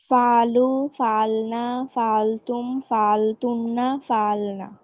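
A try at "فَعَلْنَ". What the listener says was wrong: হ্যাঁ, এখানে ফালু, তারপরে ফাল না, দ্বিতীয় যেটা আছে ফাল না, এখানে কিন্তু টান দেওয়া যাবে না, টান ছাড়া ফাল না। কারণ এটা টান দিলে তোমার ফাল না হয়ে যাবে, সেটা আবার হবে হলো ফার্স্ট পারসন প্লুরাল, ফাল না উই ডিড হয়ে যাবে।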